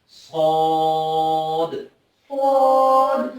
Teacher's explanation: صاد کو بالکل زبان ہماری تالو کے ساتھ لگے گی اور اس کو تھوڑا سا لمبا کر کے پڑھا جائے گا